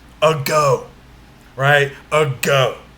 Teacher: So the word ago works just like the word alone. We don't stress the first syllable of the word, we stress the second syllable.